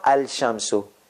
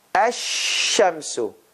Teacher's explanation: So there is this ash, lam has disappeared. So here, that means there is shadda here. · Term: sun letters